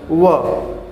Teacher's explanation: व का उच्चारण स्थान कहाँ से हुआ? दंत और ओष्ठ से हो गया। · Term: दंत ओष्ठम